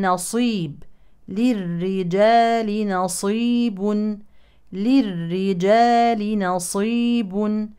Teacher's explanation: الصاد من حروف التفخيم لكن ننتبه لترقيق النون